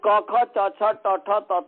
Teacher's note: क ख च छ ट ठ त थ में कर्कश आवाज है इसमें, क्योंकि श्वास इसका मूल कारण है , इसमें घिसता है, तो इसीलिए इसमें घोष नहीं है, इसमें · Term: अघोषा